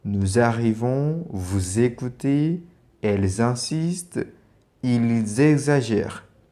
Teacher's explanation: So you can see all have X, S. They all have S at the end and the S tend to Z. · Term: liaison